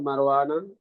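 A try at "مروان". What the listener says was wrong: भाई आप मरवाना क्यों पढ़ रहे हैं? मरवान पढ़िए ना, मरवान की बहन बीमार है। भाई उसको नून पे जबर अरबी में पढ़ेंगे ना, आप तर्जमा में भी नून पे जबर पढ़ेंगे।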